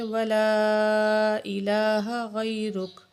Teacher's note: تو تھوڑا سختی سے پڑھیں گے، وتعالی جدک ولا الہ غیرک، ولا کے ادھر جو ہے حمزہ کے اوپر یہ مد ہے، ٹھیک ہے، اس کو ہم 7 الف کے برابر کھینچ کے پڑھیں گے